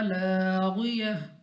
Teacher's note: फिर अलिफ मद्दा खींच कर पढ़ेंगे, गैन मुस्तालिया मोटा पढ़ेंगे, और ता को हमने गोल हा से यानी हा साकिन से तब्दील कर देना है।